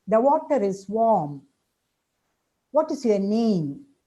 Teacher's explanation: all these are examples of utterances where with a falling intonation